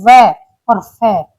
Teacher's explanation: जिनका उच्चारण करते समय हमारे दांत और निचले ओठ आपस में मिलते हैं तो उन्हें दंतोष्ठ कहते हैं। जैसे व और फ ये दंतोष्ठ है।